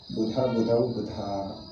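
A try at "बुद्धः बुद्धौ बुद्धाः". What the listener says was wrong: Buddha, visarga irbeku. Buddha, Buddhau, Buddha.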